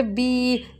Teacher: یا مدہ کو ایک الف کے برابر ہم کھینچ کر پڑھتے ہیں